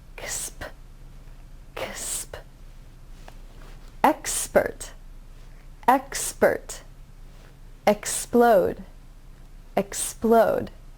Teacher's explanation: you don't have a vowel sound between the KS and P sound, so it's a cluster of 3 sounds